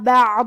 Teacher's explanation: کلمت بعض میں حرف الضاد ہے اور ضاد کی ادائیگی زبان کی کروٹ اور اوپر کے داڑھوں کے جڑ سے ہے. ضاد حروف تفخیم میں سے ہے تو ہم یہ حرف کو بھاری آواز میں اور منہ پھلا کے پڑھیں گے اور کیونکہ اس پہ زبر ہے تو ہمیں زبر کو ظاہر کرنا ہے.